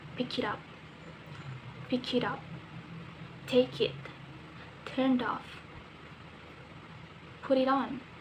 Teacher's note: We can link the three words together, become like one long word.